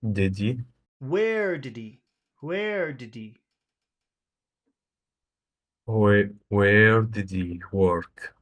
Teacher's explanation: where is very important did he is not really that important so it's very small